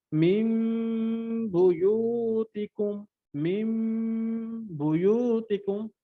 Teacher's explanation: ইকলাব হওয়ার অর্থ হচ্ছে মিম দ্বারা পরিবর্তন করে গুণনা করতে হবে।